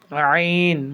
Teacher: আইন, এই দুটি হরফ গলা একটু চেপে পড়তে হয়, গলার মধ্যখানে উচ্চারিত হয়।